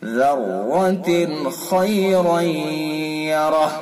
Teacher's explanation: خا کو پر کر کے پڑھیں گے